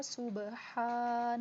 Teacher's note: سین کو سیٹی کے ساتھ ادا کر کے با پہ قلقلہ ہوگا